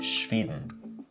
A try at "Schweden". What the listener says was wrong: I've got more of an E sound on that as opposed to A, like Sweden. Sweden.